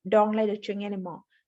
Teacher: Let her actually sounds like letter. That is because we chop the H in her. That often happens with pronouns in English.